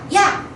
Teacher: 반모음 이라고 하는 애랑 아라고 하는 애가 합쳐진 거예요.